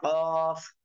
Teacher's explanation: জিহ্বার গোড়া তার বরাবর উপরে তালুর সঙ্গে লাগাইয়া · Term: দুই নক্তাওয়ালা কফ